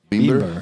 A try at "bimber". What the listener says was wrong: Bimber. Yeah, you don't use the accent, your English accent on R. It's R, like bimber. Bimber.